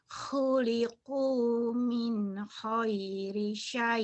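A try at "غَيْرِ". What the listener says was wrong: Jangan khairi, emang orang Jawa khairi, go-nya jadi ho. Goiri, go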